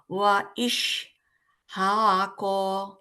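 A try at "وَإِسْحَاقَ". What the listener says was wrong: ইশ ইশ না তো ওটা সিন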